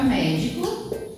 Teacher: Na palavra médico, como está acentuada a sílaba mé, então nós já identificamos que a sílaba mais forte é mé.